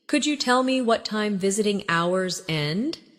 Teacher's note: In connected speech, could you becomes could ya